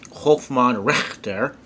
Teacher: in German, the CH would have more of a sh sound